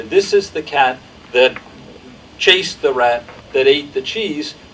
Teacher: the syntactic structure is this relentless recursive embedding but the intonation contour is this uh three-part flat structure